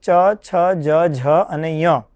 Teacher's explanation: જ્યારે શરીરાંત સંચારી વાયુ તાલુ અંગને વધારે સ્પર્શીને મુખમાંથી બહાર આવે છે ત્યારે તે વર્ણો જે ઉચ્ચરિત થાય છે એ વર્ણોનું ઉચ્ચારણ સ્થાન તાલુ ગણવામાં આવે છે.